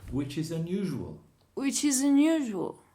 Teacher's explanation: it ends with a consonant and it begins with a vowel and then the next one it ends with a consonant begins with a vowel so you join these three words together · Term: join your words together